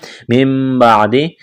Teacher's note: من بعد نون کو میم سے تبدیل کرنا ہے. غنہ کریں گے.